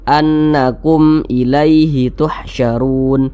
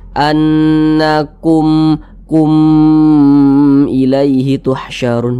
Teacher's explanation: nih bukan huruf ba bukan huruf mim maka hukumnya izhar syafawi maka dibaca jelas tidak berdengung jadi dibaca pendek saja